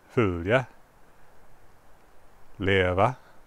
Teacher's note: accented on the first syllable but they have an uptone on the second syllable this is part of what gives Swedish its characteristic sing-song sound · Words that were two syllables in Old Norse and are still two syllables in modern Swedish are accented on the first syllable, but they have an uptone on the second syllable.